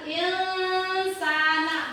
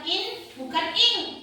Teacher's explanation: Ketika huruf nun berhuruf nun sukun ini nun sukun. Nun sukun bertemu huruf sa. Jadi ditekan sebentar.